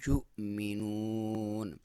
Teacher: یا پہ پیش ہے اور واو کے اوپر آپ کو حمزہ نظر آ رہی ہے تو حمزہ پہ جزم ہے، تو جب بھی حمزہ پہ جزم ہو تو وہاں پہ تھوڑا سا جھٹکے سے پڑھا جاتا ہے